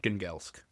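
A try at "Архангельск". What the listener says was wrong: Well, the G is pronounced like a Y, but otherwise, yeah. Arkhangelsk.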